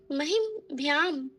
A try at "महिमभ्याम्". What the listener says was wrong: पूरा म है महिमभ्याम, महिमभ्याम,